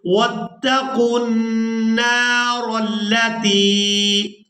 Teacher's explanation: را کو پورا ادا کرتے ہوئے لام مشدد کے ساتھ ملائیں گے